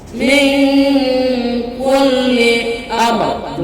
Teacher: mim sukun bertemu dengan huruf ra, dibaca jelas. Dalam istilah tajwid disebut ijhar syafawi.